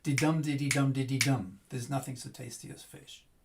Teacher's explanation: we don't need to stress those weak syllables, and we just kind of half pronounce them, and they get squeezed in.